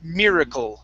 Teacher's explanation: Okay, it's kul. So it's an ul sound. It's a really quick sound.